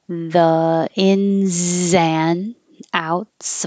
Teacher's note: The ins and outs, we don't have to say the D